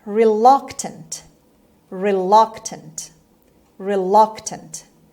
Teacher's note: the stress is on the second syllable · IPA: /rɪˈlʌktənt/